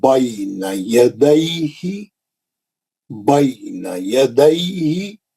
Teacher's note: یا ساکن سے پہلے زبر آیا تو لین بنتا، اس کو نرم پڑھنا ہے.